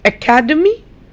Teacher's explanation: academy, the stress is on ca.